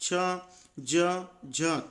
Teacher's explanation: हमारी जीभ हमारे जबड़े के ऊपरी हिस्से को छू रही है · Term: तालू